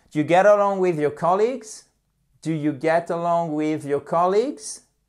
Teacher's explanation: Et on remonte l'intonation sur la fin.